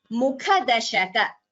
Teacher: Mukha dashaka, kha is again Mahaprana.